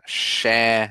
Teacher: Shan instead of a harder more harsh cha